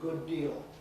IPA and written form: ˈgʊd ˈdiːl (good deal)